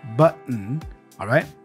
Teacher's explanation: So there is a bit of a glottal sound there.